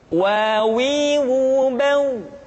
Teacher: huruf wa diucapkan dengan cara memonyongkan dua bibir kita.